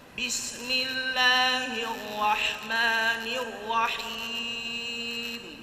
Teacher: Jadi huruf ra sekali saja naik sekali turun